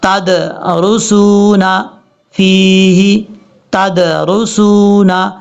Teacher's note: اگر آپ پڑھیں گے تدرسون تو یہ غلط طریقہ ہے، ہم نے اس دال میں باؤنس پیدا کرنا ہے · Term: قلقلہ